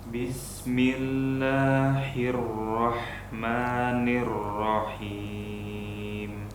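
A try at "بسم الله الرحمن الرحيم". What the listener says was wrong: Afwan, tadi hak besarnya seperti hak kecil. Bismillahi, itu hak besar.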